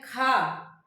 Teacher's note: ज्यादा प्राण वायु निकल रही है, तो क्या है वो, महाप्राण है